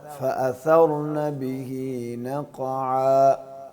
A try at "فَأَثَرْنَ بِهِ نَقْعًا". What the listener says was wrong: را کو نہیں ہلاتے، حروف قلقلہ میں سے نہیں ہے نا.